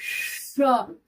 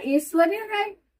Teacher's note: बच्चे श को सा बोलते हैं श नहीं नहीं बोल पाते श दोनों दांतों के बीच में से हवा बाहर की तरफ थ्रो करते हैं तब श निकलता है